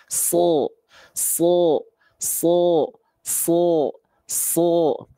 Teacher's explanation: Angkat pangkal lidahnya. Sa menjadi so.